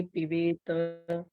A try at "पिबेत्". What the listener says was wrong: हाँ, पिबेत त नहीं है, पिबेत आधा त है, पिबेत, पिबेत आधा त, पिबेत।